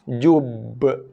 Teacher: Kalau ba tak ada sabdu, bacaan kita sekarang ba sabdu, so tekan dulu, baru lepaskan lantunannya. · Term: qalqalah